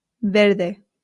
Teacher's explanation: the V in Spain makes a light B sound ver. However, in Latin America it does make more of the English VV sound.